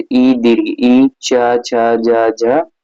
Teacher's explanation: ऐसे वर्ण जिनको उच्चारण में जिह्वा तालु को स्पर्श करती है। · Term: तालव्य वर्ण